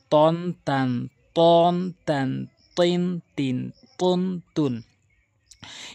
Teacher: জিহ্বার আঘাত দুই দাঁতের গোড়া থেকে উপরে দুই দাঁতের গোড়া থেকে